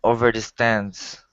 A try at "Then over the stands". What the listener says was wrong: Okay, instead of over the. Give me a good th. Then over the stands.